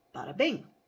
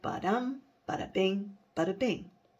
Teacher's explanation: A rising foot, two unstressed and one stressed syllable. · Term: anapest